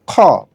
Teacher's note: খ জবর খা হবে না হবে খ জবর খ অ ধ্বনি দিবে খ পেশ খুজের খি দাল জবর দা দাল পেশ দু দাল